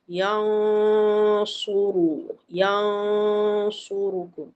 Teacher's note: dia punya dengung tu tebal sebab nak masuk ke makhraj huruf sad. Teballah. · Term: dengung yang tebal